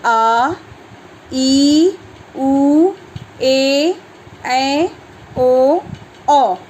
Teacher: वे स्वर जिनके उच्चारण में 2 गुना समय लगता है, यानी 2 मात्रा के बराबर समय खर्च होता है या लगता है, वे दीर्घ स्वर कहलाते हैं।